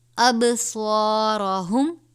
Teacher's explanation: صاد کو پور پڑھا جائے گا، الف سے پہلے زبر ہے، الف مدہ